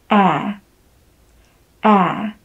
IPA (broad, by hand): æ